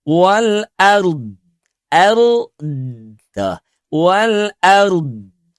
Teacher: Sebab huruf dhad pun juga dia punya sifat istitalah mengalir memanjang.